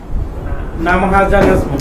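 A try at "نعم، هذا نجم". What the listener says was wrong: হ্যাঁ, নাম, কই একটু থামবেন, ইয়েস, নাম, নাম হাজা নাজমুন, নাম থেমে হাজা নাজমুন, আরবি ভাষায় এটা একটা নতুন আরবি ভাষার মিরাকল বলি, সেটা হচ্ছে আরবি ভাষায় নাম বোঝানোর জন্য দুটো শব্দ আছে, বালা আর আছে নাম, কোরআনে দেখবেন নাম ব্যবহৃত হয়েছে, বালা ব্যবহৃত হয়েছে, বালা কদ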